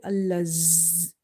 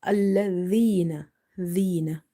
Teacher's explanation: dhal again from the tip of the tongue when it touches the inner edges of your top two front teeth. Okay, never say allazina.